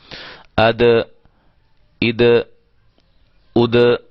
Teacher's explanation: دال حروف قلقلہ میں سے ہے، اس کو ہم ہلائیں گے